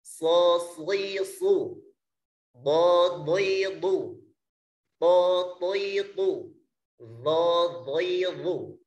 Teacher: ditinjau dari lidah bagian depan kita, ada yang melekat ke langit-langit, yaitu itbaq